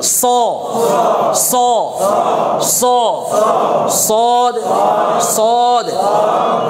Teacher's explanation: সদটা মোটা করে হবে এজন্য ঠোঁটটা একটু গোল হবে